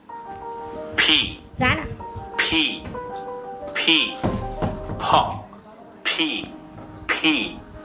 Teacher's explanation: দুই ঠোঁট মিলিয়ে ফেলেন মনে করবেন দাঁত নাই